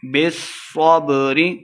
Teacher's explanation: صاد مشدد ہے، با کو صاد کے ساتھ ملا کے پڑھیں گے ، بالصبر، وتواصوا بالمرحمہ، بالمرحمہ وقف کریں گے، اولئک اصحاب المیمنہ،